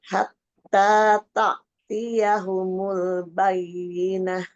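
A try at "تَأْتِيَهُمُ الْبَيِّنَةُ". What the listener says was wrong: Hamzahnya jelas ya. Tak. Langsung.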